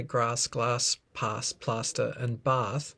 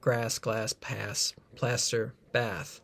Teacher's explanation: from England you'd probably use a different vowel so if you're from the UK you probably say grass glass pass plaster and bath whereas the Americans would use the ah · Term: Trap bath split